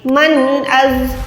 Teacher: من اظلم ممن منع नून साकिन के बाद ये जो अलिफ है यहाँ पर हमने नून साकिन को जाहिर करना है, इजहार करना है